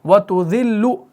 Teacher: تو اس لام کو آپ نے باریک ہی پڑھنا ہے، یہ مرقق ہی پڑھا جائے گا